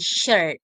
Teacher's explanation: And sh sh is a voiceless palato-alveolar and fricative. Palato-alveolar is produced with the tongue blade behind the alveolar ridge approaching the hard palate with a sidely rounded lips, creating a sh sound without vocal cord vibration.